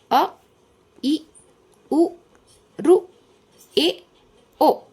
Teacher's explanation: ಒಂದು ಮಾತ್ರಾ ಕಾಲಾವಧಿಯಲ್ಲಿ ಉಚ್ಚರಿಸಲ್ಪಡುವಂತ ಅಕ್ಷರಗಳಿಗೆ ಹರಸ್ವಸ್ವರ ಎನ್ನುವರು